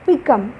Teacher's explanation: Ahead, beneath అనే దగ్గర కూడా మనము బి దగ్గర అసలు ఎయిర్ ఫోర్స్ వాడటం లేదు, నీత్ దగ్గర కొంత ఫోర్స్ వాడుతున్నాం కాబట్టి అక్కడ స్ట్రెస్ వస్తుంది. పికమ్, బి అన్నప్పుడు తేలిగ్గా పలుకుతున్నాము, కమ్ అన్నప్పుడు కొంత ఎయిర్ ఫోర్స్ యూస్ చేస్తున్నాము. ఆ ఫోర్స్ యూస్ చేయడమే, ఆ ఒత్తిడి పెట్టడమే స్ట్రెస్ అంటారు.